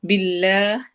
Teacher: جلالہ کے لام کو باریک پڑھنا ہے